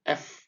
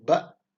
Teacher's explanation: Makhrajnya berada di bibir, ya, F, ya, F. Kalau bibir kita rapat, kita agak sulit mengucapkan huruf F, malah jadi huruf ep, ya, jadi ba